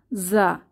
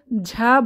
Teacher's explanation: জিহবার আগা সামনের নিচের দাঁতের গোড়ায় চেপে তীক্ষ্ণ আওয়াজ, বা এটাকে সফির বলে, তীক্ষ্ণ আওয়াজ বা ভাইব্রেশন সাউন্ডে